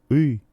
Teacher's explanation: Esta letra designa una vocal cerrada posterior, no redondeada, y se pronuncia i, un sonido ajeno al sistema vocálico del ucraniano estándar.